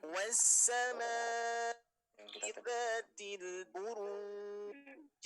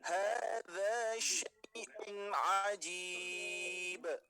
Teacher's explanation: qalqalah kubro yang mana posisinya ada di akhir ayat. Nah, ini baru terdengar jelas karena tidak nyambung dengan huruf yang di depannya